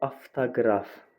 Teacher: Avtoqraf sözündə vurğu o-ya düşdüyünə görə elə o kimi də tələffüz olunacaq. Çünki qraf hissəsi ki var, bu vurğu qəbul etmir.